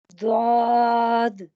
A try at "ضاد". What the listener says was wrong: تھوڑا سا اور موٹا کریں. ابھی الف کے ساتھ موٹا نہیں آ رہا، الف بھی موٹا ہوتا ہے اس کے ساتھ.